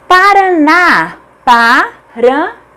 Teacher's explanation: A última sílaba é tônica, portanto é acentuada porque é uma oxítona terminada em A